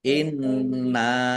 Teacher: Nun tasdid dibaca ghunah atau mendengung ditahan